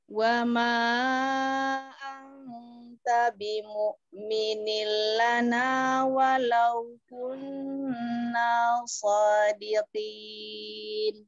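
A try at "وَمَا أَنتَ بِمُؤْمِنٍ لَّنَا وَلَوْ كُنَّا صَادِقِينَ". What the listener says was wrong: Ro fathahnya ditebalkan lagi. Ya, jadi tadi masih agak terbuka ro ya, dinaikkan lagi pangkalnya.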